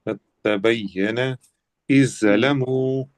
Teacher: پہلے حرف کی آواز ہی ختم ہو گئی، دال کی آواز ہی ختم اور زال کی آواز ہی ختم ہو گئی، قد تبین تا کی آواز آ رہی ہے۔ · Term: ادغام